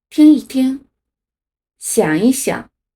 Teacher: 一在重叠动词中的时候读轻声，轻声就是又轻又短的发音